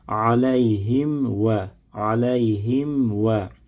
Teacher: Mim hərfinin məxrəci bildiyimiz kimi dodaqlarımız yumuşaq bir formada bağlanır. Amma dodaqlarımız açılan zaman artıq vav hərfi ilə açılsın.